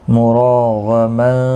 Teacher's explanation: غین مستعلیہ ہے، پر پڑھا جائے گا۔